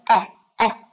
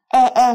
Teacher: là một âm e bẹt ở trong tiếng Anh, là sự kết hợp giữa âm a và âm e. Chúng ta sẽ không đọc giống như âm e ở trong tiếng Việt là e e, mà chúng ta sẽ đọc là ẻ ẻ ẻ ẻ.